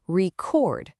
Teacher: if I just shift the stress to the second syllable, it becomes record. Now it's a verb. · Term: noun verb shift